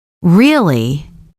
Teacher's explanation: if you say really with a rising tone, it sounds like a question. But if you say really with a flat tone, it sounds like you're not impressed.